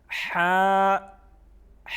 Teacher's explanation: ایک الف کے برابر اس کو کھینچ کے پڑھیں گے ہا. ہا جس طرح مخارج میں ہم نے پڑھا کہ یہ حروف حلقیہ میں سے ہیں تو حلق سے ادا ہوتا ہے